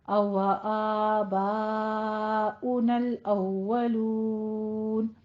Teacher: अवा आबाउनल अव्वलून, आ बा, आ मुंह खोल के अदा कीजिए, 2 काउंट करना है, लेकिन बा में क्या है, अलिफ मद्दा के फौरन बाद हमजा, एक ही कलिमा में मद्दे मुत्तसिल वाजिब, इसको 5 काउंट करना है